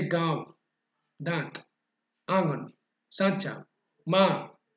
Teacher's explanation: ऐसे स्वरों का उच्चारण नाक और मुंह से होता है ना, दोनों मिक्स करके होता है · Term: अनुनासिक